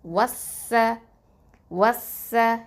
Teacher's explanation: இதுக்கு நடுவில் ஹம்சத்துல் வசல், லாம், இது ரெண்டும் நம்ம உச்சரிக்க மாட்டோம். ஏன் அப்படின்னு சொன்னால் அந்த சீன் அப்படிங்கிறது வந்து ஹுருஃபு ஷம்சியா எழுத்து, அதனால் நம்ம உச்சரிக்க மாட்டோம்.